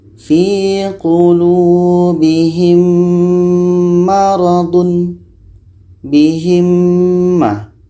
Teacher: Jadi karena hurufnya sama, otomatis sudah masuk kepada huruf mim. Mim mati bertemu mim. Bunyi mim sudah masuk kepada bunyi mim dan dibaca dengung. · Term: idgham mithlain